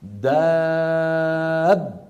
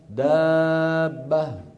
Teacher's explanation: بيان الباء الأولى وأنها خرجت بالتصادم